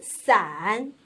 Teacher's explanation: 它的声母是平舌音思，韵母是前鼻韵母俺